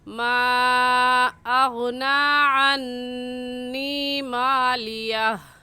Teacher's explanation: ما ایک لفظ ہے اور اغنا دوسرا لفظ ہے، حروف مدہ کے بعد حمزہ اگلے کلمے میں ہے، اس وجہ سے اس کو مد منفصل اور مد جائز کہیں گے، اور اس مد کو 3 الف کے برابر کھینچ کر پڑھیں گے